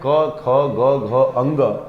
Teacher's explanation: कवर्ग का उच्चारण स्थान कंठ से होता है।